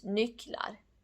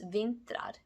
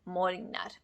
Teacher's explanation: The unstressed vowels e, a, and u disappear in plural.